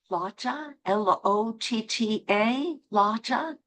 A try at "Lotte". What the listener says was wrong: an E at the end. Lotte.